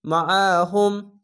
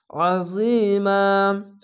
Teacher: আইনটিকে মোটা করে গলা চিপে পড়বেন। মিম জবর মা, আইন জবর আ, মা আ, হা মিম পেশ হুম, মাআহুম।